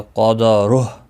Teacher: قاف مستعلیہ ہے پر پڑھا جائے گا، را پیش کی وجہ سے پر پڑھا جائے گا، اور ہا ساکن پڑھا جائے گا۔